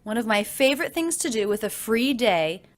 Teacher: both the words free and day have a lot more length than the others